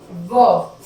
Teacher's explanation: दंतोष्ठ मतलब दांत और ओष्ठ। व, जब हम व कर रहे हैं तो हमारा दांत भी लग रहे हैं और होठों का भी इस्तेमाल हो रहा है।